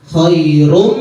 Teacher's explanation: Nah, bukan khairun tapi khairum ya. Langsung melebur ke huruf minnya ya.